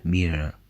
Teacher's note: you heard an R sound, which was an alveolar or post-alveolar approximant, similar to the R sound in North American English. That sound is written with a single R.